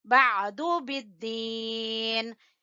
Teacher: आइन का मखरज जो है वो गले के दरमियान में से सही से निकले